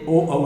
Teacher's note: तो ओ और औ का उच्चारण सब कंठ और ओष्ठ है, कंठ और होंठ से ओ औ निकलता है। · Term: कंठौष्ठ्यौ